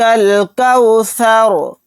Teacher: را کو ساکن بنا کر پڑھیں گے کیونکہ یہاں پر آیت ہو رہی ہے